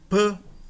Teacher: Nós armamos a boca para proferi-lo e depois fazemos uma breve interrupção, uma momentânea interrupção e depois liberamos o som. Quando nós armamos a boca e fazemos a breve interrupção, os lábios estão fechados. Por isso esse som é chamado de labial, né?